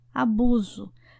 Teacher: Perceba que abuso não tem som de S, mas sim o som de Z.